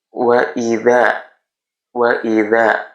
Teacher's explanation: Cara bacanya dipanjangkan dua harakat atau satu ayunan atau penyebutannya satu alif. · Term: mad thobi'i